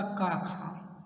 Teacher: जिन व्यंजनों के बोलने में हमारी स्वर तंतुओं में कंपन ना हो अघोष कहलाते हैं।